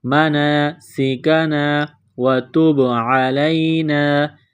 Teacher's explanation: مَنَاسِکَنَا وَتُبْ عَلَيْنَا تا کو با کے ساتھ پلس کرنا ہے، با ساکن ہے، یہاں پر قلقلہ کریں گے